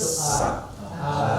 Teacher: bagian punggungnya naik ke atas, ada sifat isti'lanya dan tarik ke belakang sedikit. Seolah kita menarik lidah kita ke belakang.